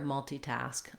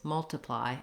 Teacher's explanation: I'm unstressed on multi and multi, but I have a clear vowel. In this case, multiply, I have a reduced vowel.